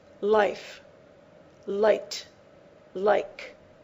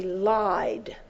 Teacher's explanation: whenever you have the vowel I before a voice consonant you pronounce it elongated and open